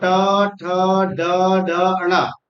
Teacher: मुरधन्य वर्ण अर्थात मुरध से उच्चारण होने वाले वर्ण